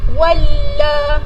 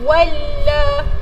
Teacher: waw ni terus masuk ke dalam huruf sabdu